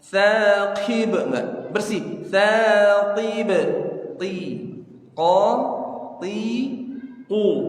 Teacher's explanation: Tib bukan kib, tapi ti. Ti huruf qaf enggak boleh ada hamas.